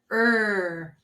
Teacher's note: your lips are apart teeth gently together and your tongue is flat so it touches the sides of your back teeth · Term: er sound